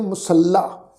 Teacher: ਲੱਲੇ ਅੱਖਰ ਦੇ ਉੱਪਰ ਬਲ ਦੇ ਕੇ ਅਸੀਂ ਪ੍ਰੋਨਾਊਂਸ ਕਰਦੇ ਹਾਂ